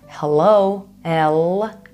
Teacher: in English you guys pronounced the L more at the back of your mouth or oral cavity so to speak but this one is much more at the front of your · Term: English l